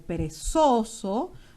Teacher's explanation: perezoso donde la intensidad está en la penúltima sílaba